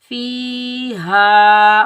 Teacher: हा को सीने से अदा करेंगे